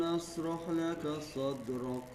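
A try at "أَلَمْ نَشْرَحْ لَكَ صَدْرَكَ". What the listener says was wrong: Nashrah. Anginnya biar keluar dulu. Jadi jangan dipotong. Nashrah laka. Jangan buru-buru. Alam nashrah laka sadrak.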